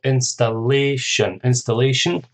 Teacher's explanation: Installation, that's 4 syllables. Stress on the third syllable.